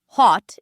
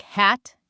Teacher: British English tends to use a rounder, almost more open O, while American English tends to use a flatter sound. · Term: the O sound